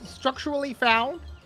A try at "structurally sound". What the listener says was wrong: say structurally found? It's structurally sound. You said found.